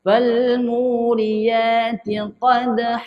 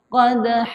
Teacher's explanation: Lantunan tu ada tapi lantunan yang kecil. Qadha. Okey, qad tu qalqalah sughra dal.